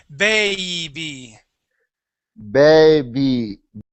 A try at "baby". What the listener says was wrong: get that E in there.